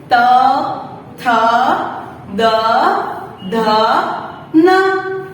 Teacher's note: त वर्ग त थ वो सारे दंतव्य है, यानी कि हमारी जीभ हमारे दांतों को टच करेगी